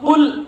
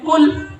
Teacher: آپ قرآن مجید پڑھتے ہیں قل هو اللہ احد، اس کا معنی ہے کہہ دیجئے اللہ ایک ہے۔ جب آپ قل قاف حلق سے ادا کرتے ہیں موٹا پر کر کے